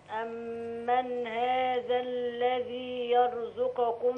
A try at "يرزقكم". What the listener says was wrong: لا، القاف مضمومة والزاي مضمومة والكاف كمان مضمومة. يرزقكم.